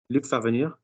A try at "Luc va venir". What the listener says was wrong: Lovely. That's lovely.